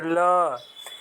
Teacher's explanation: जीभ मसूड़ों को छूती है और जो हवा होता है जो जीभ के आसपास से ही निकल जाता है, उससे पार्श्विक व्यंजन कहते हैं।